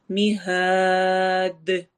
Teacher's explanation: ہاں کو لمبا کرتے ہوئے دال سے ملانا ہے. دال پہ قلقلہ ہوگا، ایکو ساؤنڈ ہوگی چونکہ دال قلقلہ والے حروف میں سے ہے جو کہ قاف طا با جیم دال ہیں۔